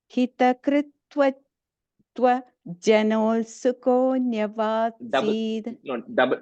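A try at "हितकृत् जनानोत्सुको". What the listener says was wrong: Double na comes there. Jananotsuko.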